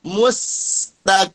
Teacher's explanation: Kalau dia sebelumnya dia dhammah, maka sin yang sukun huruf istifal ini mestilah dia ditarik ke belakang. Mustaqim, sambil dijalankan suara karena rokhawah.